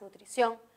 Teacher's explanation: reconozco la sílaba tónica es la última es la que suena más nutrición y termina en n por eso lleva tilde cierto hasta